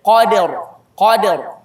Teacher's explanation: Qaf tebal, dal tipis, ra tebal